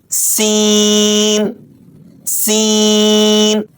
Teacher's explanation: دانت بند کر کے باریک سیٹی کی آواز کے ساتھ پڑھیں